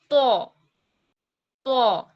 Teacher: تو کو موٹا ادا کرنا ہے. اس کے لیے ہم نے اپنے ہونٹوں کو گول کرنا ہے اور ادا کرنا ہے تو.